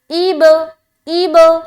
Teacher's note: अब बा के ऊपर सुकून है और बा हरूफ कलकला में से है, लिहाजा कलकला करेंगे।